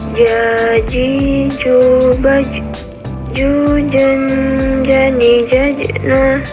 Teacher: Selanjutnya, huruf Ja. Dilafalkan dengan menyentuhkan tengah lidah ke daerah langit-langit.